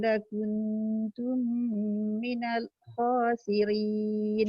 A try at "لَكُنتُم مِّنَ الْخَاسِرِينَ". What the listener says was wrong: Dekat lam tu dia jangan macam seolah-olah berhenti minal khasirin. Sebab dia ada tawasud. Dia jangan terhenti terus. Minal dia tak boleh.